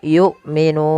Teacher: hamzah harus ditahan suaranya dan ditahan nafasnya karena sifat hamzah ada syiddah dan jahar. Nun ada mad arid lisukun sebagaimana yang sudah kita bahas tentang mad arid lisukun.